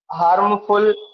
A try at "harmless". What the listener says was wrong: You're reading some of the words wrong. It is written, a dog is a domestic animal, and dogs are harmless, not harmful. harmless.